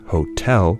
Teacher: in the word Hotel the second syllable is pronounced louder than the first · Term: stress accent